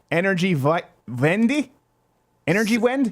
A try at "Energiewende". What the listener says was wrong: Vend. W is a V.